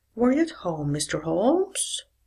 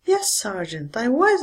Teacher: the yes/no questions should be read with a lower rise and the statements with fall